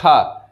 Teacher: उसके बाद खा जो है उसमें ज्यादा हवा निकले तो महाप्राण होगा